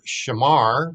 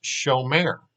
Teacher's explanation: you put the o sound in the first syllable where there used to be an ah sound